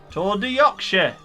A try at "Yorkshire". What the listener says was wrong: Yorkshire. The R is silent.